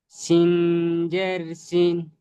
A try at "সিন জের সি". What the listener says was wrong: সিন বলবেন না, সিন। সিন জের সি। সিন নয়, সি। সি।